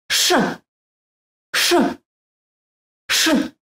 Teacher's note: The letter SH sounds like SH in short, but with the tongue farther back in the mouth.